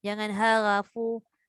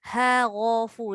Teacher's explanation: Dia tak boleh sama ra dengan ha. Ha tu memang dia nipis lah.